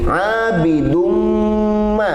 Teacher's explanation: Dengung di sini abidumma, namanya idgham bi gunnah, harus dibaca ditahan 3 harakat